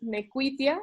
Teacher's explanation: La Q con la U se sigue pronunciando un poco como una W, esa falsa vocal sigue teniendo sonido, y después en español se pierde.